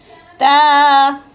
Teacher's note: ता को ज़ुबान की नोक और ये सामने वाले जो दांत है ना, इसकी बैक यानी जड़ों के साथ इसकी ये ज़ुबान की नोक लगे तो ता अदा होता है